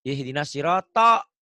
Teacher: Ini R-nya benar, bukan siratal tapi ganti O, siro.